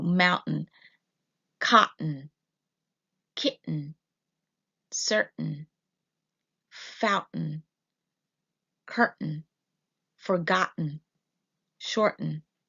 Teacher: So mountain becomes mountain. So we just kind of stop right before the T and then add the N sound.